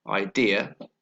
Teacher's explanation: first the word idea the stress is on the second syllable